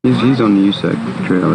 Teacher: this person produces creaky voice at the end, which often occurs at the end of somebody's turn. · this is what the pitch contour looks like. It starts high, like normal, and it progressively goes down. So this is an intonation contour that's typical of this kind of statement.